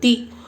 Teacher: ولا اجر الاخرہ، تا کے نیچے زیر ہے، زیر کو جلدی پڑھیں، تھوڑا بھی نہ کھینچیں، زیر کی آواز نیچے کو جاتی ہے۔